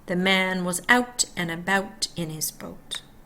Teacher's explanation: Canadian raising with the A and the U